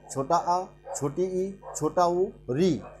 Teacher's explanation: वे स्वर जिनके उच्चारण में अल्प या एक मात्रा का समय लगता है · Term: हरस स्वर